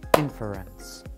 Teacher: we generally stress the beginning of the word we can show this by clapping when we say the word inference